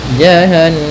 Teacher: Kemudian jahannama kanat, sama caranya adalah dengan menahan suara ya, suara gunnahnya ditahan atau suara dengungan di nunnya